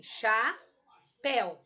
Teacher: Pel, o el, eu pronuncio numa sílaba só. É um ditongo.